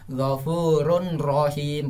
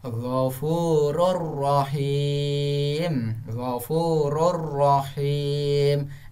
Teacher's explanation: Berarti nun yang itu dihapuskan, tidak dibaca, diganti dengan huruf ro, dengan syarat ro itu ditambah tasdid. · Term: idgham bila gunnah